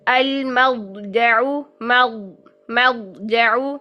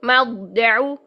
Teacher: زبان کی جڑ اوپر، زبان کا وسط اوپر، اور زبان کا تو اپنا مخرج بھی حافہ لسان ہے، سائڈز بھی اوپر، سارا کچھ، ساری زبان اوپر چلے گئی ہے، ٹھیک ہے۔ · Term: موٹا ترین